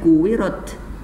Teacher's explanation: Jadi kalau tadi kalau ba, nih yang ini nih, kalau ba dalam keadaan sukun mati dia dibacanya qalqalah ab. Maka kalau huruf ta dalam keadaan mati dibacanya bukan qalqalah tapi ada anginnya, hamas, at gitu ya.